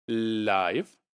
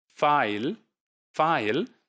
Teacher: But in another word like file, because f, I, and l, so the l which is occurring at the end, at the coda position, that l is the dark l, and that's a velarized l.